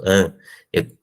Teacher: eu avanço o corpo da língua para frente para permitir o abaixamento do véu e, assim, produzir a ressonância na cavidade oral e também na cavidade nasal